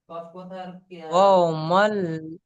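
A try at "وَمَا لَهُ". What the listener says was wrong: ওয়াও নয়, ওয়া মাল লহু, ওয়া মাল লহু। নয়, ওয়াও জবর ও, ওয়া মাল, ওয়া মাল। ওয়া মাল।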